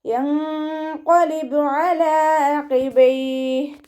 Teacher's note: നൂൻ സാക്കിനയെ മറച്ചു വെച്ചിട്ട് മണിച്ചോതി കൊടുക്കുക. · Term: ഇഖ്ഫാ